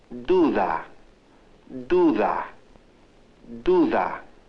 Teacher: The middle D is pronounced differently, like th. When the da sound occurs between vowels, it is pronounced th.